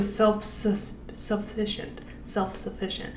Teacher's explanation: he's going from that f right to an s so i would keep it more of like f almost almost